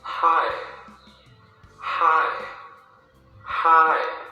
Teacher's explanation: So, here the sound goes up, and then goes down again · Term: falling tone